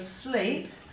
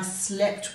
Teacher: we go from a long e sound to a short one